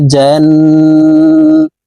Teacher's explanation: নুনের সাথে নাকের বাঁশি থেকে তিন সেকেন্ড পরিমাণ গুন্না করে ধরে রাখতে হবে